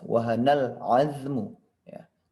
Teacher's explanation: Alif lam qamariyah, maka jelas wahanal azmu ya, tidak ada samar-samarnya.